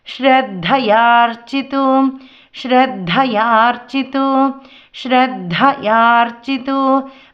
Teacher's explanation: శ్రద్ధా దాసైలంటే కిందన మహాప్రాణమం ధా పలుకుతామండి. యార్చితు రాసైలంటే చాకికారం అండి.